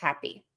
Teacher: We're always going to stress that hap syllable